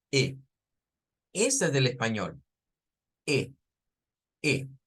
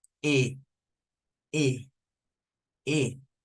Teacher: Entonces, en Spanish, E es close. En inglés existe esa E close. Pero además existe una E open.